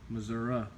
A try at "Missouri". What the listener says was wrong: Not so long on the S's. I'm doing that to show you how to say it. Say Missouri.